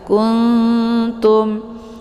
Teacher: ya Nun posisinya ujung lidah ta juga posisinya ujung lidah maka ketika nun sukun bertemu dengan Ta ini cara bacanya nunnya disamarkan kemudian siap-siap memasuk ke huruf ta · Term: Ikhfa aqrab